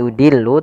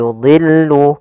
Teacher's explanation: dha di sini huruf isti'la termasuk huruf tafkhim, maka dia tetap ditebalkan